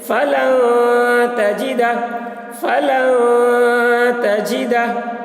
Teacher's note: نون کی آواز کو ناک میں چھپا کر پڑھیں گے، اس کو اخفا کہتے ہیں